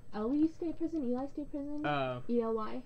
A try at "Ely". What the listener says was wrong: Ely is how it's pronounced.